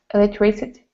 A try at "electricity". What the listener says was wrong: on electricity you need to pronounce the last part it's stressed